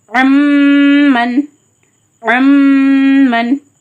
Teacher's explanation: இங்க இது மல் குவின் எழுத்தான மீம் இடம் பெற்றிருக்கு அதனால என்ன பண்ணனும் இன் சவுண்ட முச்சிலமா நீக்கிட்டு மீம் சவுண்ட மாத்தி மல் குன்றதால ஒரு அலி நிகரா மூக்குல நிறுத்தி ஹோல் பண்ணி குன்னா பண்ணி ஓதணும். · மீம் சவுண்டாக மாற்றி மால் குன்னான்றதால ஒரு அலிஃப்க்கு நிகராக மூக்கில் நிறுத்தி ஹோல்ட் பண்ணி குன்னா பண்ணி ஓதணும். அன் அப்படின்றத அம் அம் அப்படி ஓதணும்.